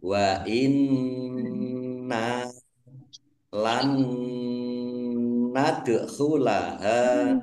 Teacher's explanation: Wa inna nun tasdid, ya, dibaca double nunnya, ada tasdidnya. Nun tasdid dibaca gunnah, mendengung. Ditahan biar tampak dengungannya. · Dal sukun bacaan kolkolah dibaca memantul, ditampakkan pantulannya